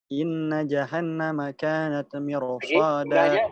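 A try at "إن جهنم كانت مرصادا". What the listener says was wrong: Gunanya jangan lupa gunnah. Dua-duanya. Non tasdid itu ada dua itu.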